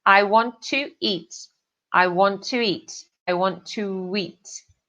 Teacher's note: O W é entre os dois vogais, para ele fazer esse som mais fácil, mais fluido, ok? A gente tem esse W que vai fazer um som, o linking som entre to eat.